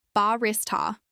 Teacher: This is pronounced with stress on the second syllable